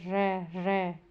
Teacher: सांस जीभ से टकराकर र लुड़कती सी लगती है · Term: लुंठित व्यंजन